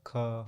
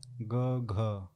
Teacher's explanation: ग और घ आपके सघोष व्यंजन है।